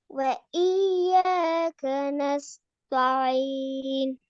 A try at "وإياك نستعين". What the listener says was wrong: தா அல்ல தே தாண்டு வரக்கூடாது இப்பதான் என்ன சொன்னேன் நஸ்தஈன் وإياك نستعين